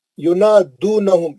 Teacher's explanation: نہم میں میم ساکن کا اظہار شفوی ہے